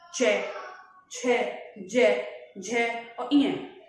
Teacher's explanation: च वर्ग को हम बोलते हैं तालव्य, यानी जो च वर्ग के उच्चारण में हमें समय लगेगा, जो हमारी ध्वनि बनेगी वो तालु से टकराने के बाद, यानी जीभ के तालु से टकराने के बाद बाहर निकलेगा